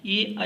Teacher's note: ये ऐ इनका उच्चारण स्थान कंठ तालु है